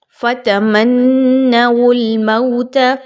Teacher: میم اور نون کو ملاتے ہوئے نون مشدد کا غنہ اچھے طریقے سے کیجئے